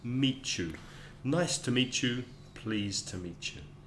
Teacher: Meet you has a kind of a ch in the middle.